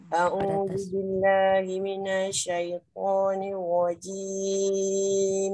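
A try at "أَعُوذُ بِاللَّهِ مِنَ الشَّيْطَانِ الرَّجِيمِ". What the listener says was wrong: Minasyai. Dia tak melekat dah selalu. A'udzu billahi minasy, terus pada syin.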